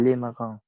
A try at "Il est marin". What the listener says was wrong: Il est marin, parfait.